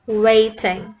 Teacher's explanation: I lengthen a bit the first syllable way to emphasize the concept of waiting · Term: syllable duration